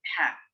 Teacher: Ada juga ha yang di tengah halqi atau wastul halqi